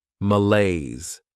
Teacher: This word has two syllables and the stress is on that second syllable.